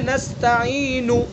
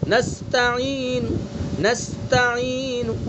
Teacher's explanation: ایک تو پوری حرکت ہوئی، پوری حرکت تو یہ ہے نستعین، سب کو معلوم ہوا کہ کیا پڑھا گیا ہے، نستعین سب کو معلوم ہوا ہے، یہ ہے پوری حرکت۔ لیکن ہمیں وقف بالروم کو ادا کرتے وقت پوری حرکت ادا نہیں کرنی ہے بلکہ تہائی حصہ ادا کرنا ہے